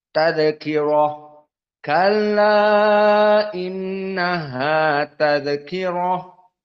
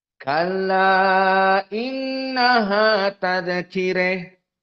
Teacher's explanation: Maka al-Kisai ha at-ta'nis dibaca dengan al-imalah al-kubra.